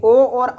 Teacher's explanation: औदतो कंठोष्टम, यानी ओ और औ का उच्चारण स्थान कंठ और ओष्ठ दोनों होता है, इसलिए इसको कंठोष्ट बोला जाता है।